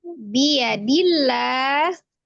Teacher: Dilla itu ada alif lam zalalah yang sebelumnya ada hurufnya berharokat kasrah di huruf dal di, maka dia dibaca tarqiq. Tipis ya, dilla, lanya otomatis ya, kalau di lafaz Allah lanya itu menjadi mad.